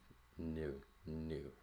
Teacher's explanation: the air is being pushed out through the nose smaller resonating chamber because it's sealed off right here so you get the distinction · the tip of the tongue is going to seal off the front of the mouth but behind the teeth new new right so the air is being pushed out through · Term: nasals